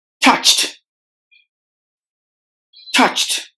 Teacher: virtues touched touched the letters o and E are silent and letter D at the end is replaced with the T sound